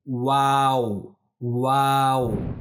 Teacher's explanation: ये जो हर्फ है इसका जो तलफुज़ है वो कुछ इस तरह से अदा होता है कि जो होठ है हमारे वो दोनों होंठ जो हैं वो मिल जाते हैं और वो गोल हो जाते हैं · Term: वाव